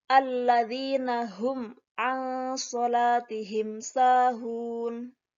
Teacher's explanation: Cara membacanya yaitu dengan jelas. Idhar kan artinya jelas. Jelas di bibir dan mulut tertutup tanpa dipanjangkan. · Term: idhar syafawi